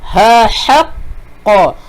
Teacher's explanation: Ha yang tajam ni dia kena tekan sebab dia berada di kawasan tengah kerongkong.